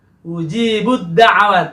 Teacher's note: Jadi huruf ta-nya dilebur ke huruf dal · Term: idgham